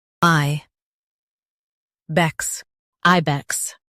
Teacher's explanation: Emphasize I and keep bex quick.